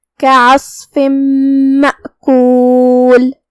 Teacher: یہاں بھی حکم ہے ادغام بغنہ، تو ہم یہ تنوین کو میم میں داخل کر کے غنہ اور تشدید کے ساتھ یہ حکم کو ادا کریں گے